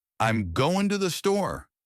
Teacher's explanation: The words that carry meaning are going and store. The rest, I'm, to, the, are reduced and said quickly.